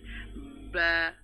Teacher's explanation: দুই ঠোঁট থেকে ঠোঁটের ভিজা অংশ থেকে বা এভাবে বলতে হবে